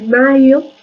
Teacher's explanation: podemos encontrar una pronunciación deslizada, que incluso podríamos hablar de vocalización